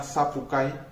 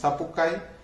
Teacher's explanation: No aparece, entonces en la palabra zapucay, como la ven allí, el acento va sobre la A, y mientras que la I se pronuncia brevemente y además es átona. Entonces zapucay, esta I acompaña a la letra A, la podemos identificar de esa manera. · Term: vocal I breve